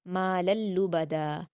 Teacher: لام کی تنوین کے بعد لام ہے، ادغام یرملون بنا غنہ کے ہوگا